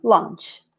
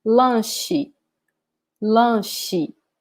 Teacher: So attention here because this CH in Portuguese is not pronounced like in English. In English is ch, right? In Portuguese, the sound here is sh, sh.